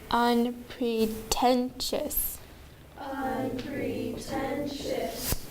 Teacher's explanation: There are 4 syllables and the third syllable gets the accent.